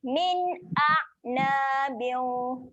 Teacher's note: Tahan bunyi ain mati di tengah kerongkong.